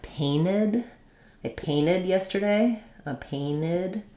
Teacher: they'll drop the T, so they might say it like painted